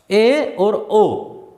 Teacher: अब देखिए अर्धसंवृत स्वर। अर्धसंवृत स्वर में यानी मुंह थोड़ा सा खुलता है